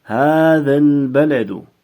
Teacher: avval kelgan so'z mad harfi bilan tugagan bo'lsa ham, keyingi so'z bosh harfi bilan yopiq bo'g'in hosil qilingani uchun ular qisqa unlilar kabi o'qiladi